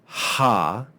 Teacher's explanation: the consonant ha which is just breath and that breath is made back in the throat